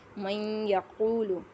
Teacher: من یقول، اب یہاں آپ دیکھیں کہ یہاں یا کا جو آواز کا ابار ہے وہ زیادہ ہے، کہ محسوس ہمیں ایسا ہے کہ یہاں یا کو پڑھا جا رہا ہے۔ میم کو ہم نے یا میں اس طرح مدغم کیا کہ پڑھنے میں ایک حرف مشدد معلوم ہوتا ہے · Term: ادغام